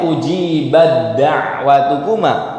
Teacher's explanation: Dibacanya diidghamkan nih, taknya tidak dibaca. Taknya nggak dibaca, tapi berubah menjadi tasydid di huruf selanjutnya.